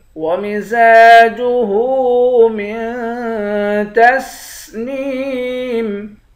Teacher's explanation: میم کو نون کے ساتھ ملا کر نون پر اخفا کریں گے